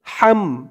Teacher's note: গলার ভেতর থেকে আওয়াজটা চিকুন হয়ে বের হবে